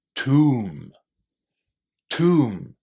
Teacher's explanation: Many words in English that finish in MB have a silent B. And then the letter O inside here is pronounced as oo. The long oo sound.